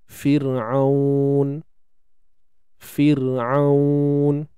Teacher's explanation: Ra mati sebelumnya baris bawah, dibaca nipis.